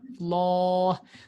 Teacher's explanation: So the lam is mufakham and the alif after the lam is mufakham.